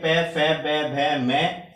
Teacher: last वाले अक्षर को पंचम अक्षर बोलते हैं और ये नाक की सहायता से बोले जाते हैं